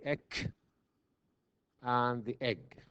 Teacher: the back of the tongue touches the velum for the egg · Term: velar stop